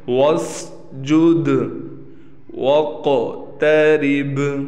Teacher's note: قاف موٹا بھی ہے، قاف پر قلقلہ بھی ہوگا